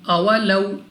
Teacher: واو ساکن سے پہلے زبر واولین، بغیر کھینچے بغیر جھٹکا دیے پڑھیں گے اولو۔ اس کے بعد الف سے پہلے زبر الف مدہ 2 سیکنڈ تک لمبا کرنا ہے۔